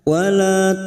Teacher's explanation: wala lam alif dua harakat kita panjangkan